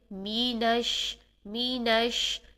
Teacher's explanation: میم کی زیر کو بہت باریک انداز میں ادا کریں گے، پورا ادا کریں گے یعنی ای کی ساؤنڈ لے کر آئیں گے، مینش۔ جب ہم نش کریں گے تو شین میں ہم پھیلی ہوئی منہ کے اندر ساری پھیلی ہوئی ساؤنڈ سے ادا کریں گے۔